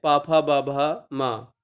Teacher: पा वर्ग में जितने भी वर्ण आते हैं उन सभी का उच्चारण स्थान ओष्ठ होता है।